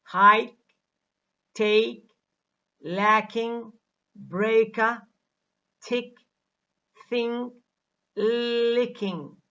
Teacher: K also has less aspiration when it occurs medially or finally.